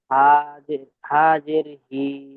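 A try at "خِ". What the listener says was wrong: খা বলবেন না, খ বলেন, খ জের খি।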